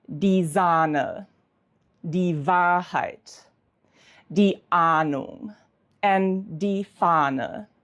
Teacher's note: A plus H. In this situation, the H is silent and the A is pronounced as a long A.